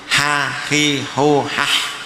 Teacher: Jadi, 'ha' memiliki makhraj di tengah tenggorokan.